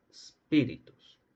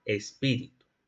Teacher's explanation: Un apócope del fricativo alveolar sordo